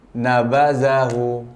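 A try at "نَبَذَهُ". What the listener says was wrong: Oke, jadi hu-nya jangan juga dipanjang, nabadahu. Nah, itu berarti hu-nya panjang. Tapi semuanya pendek.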